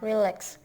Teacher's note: Word stress on the second syllable.